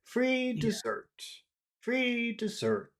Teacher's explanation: with a low tone so we'll say free dessert free dessert go down by the end